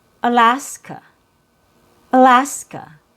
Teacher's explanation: So, you open your mouth and you say this syllable clearly. So you say it a little bit louder and longer because that's your stressed syllable with a real vowel sound.